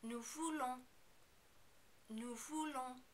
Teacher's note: be careful not to overpronounce the N at the end of the verb.